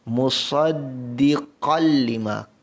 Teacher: Musaddiqal, tanwin bertemu dengan lam yang berbaris bawah, hukumnya idgham bila gunnah, terus masukkan tanwin ini kepada lam yang baris bawah ini dengan tanpa dengung